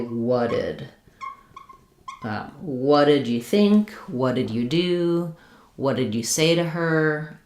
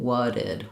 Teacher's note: we change it to a flap and link it to the D, and we just end up with kind of one flap sound in between